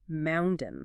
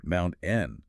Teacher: It sounds like you hit a brick wall right in the middle of the word. The air just stops. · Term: glottal stop